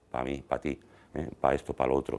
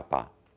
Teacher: Por ejemplo, en español es bastante frecuente, en el español hablado, que la preposición para funcione como pa